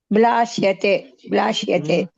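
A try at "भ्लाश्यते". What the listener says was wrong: భా అండి అది. భాకి లావత్తు. భ్లాష్యతే.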